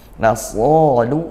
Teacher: sadnya kita tebalkan karena dia itbaq, ya, huruf tebal